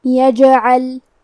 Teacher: جیم بھی حروف القلقلہ میں سے ہے تو ہم یہ حرف کو ہلاتے ہوئے یہ کلمہ کو پڑھیں گے